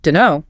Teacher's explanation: The T in don't often just vanishes. >> So you're left with deno. · The consonant cluster DNT is just too clunky to say at speed, so it gets simplified. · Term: elision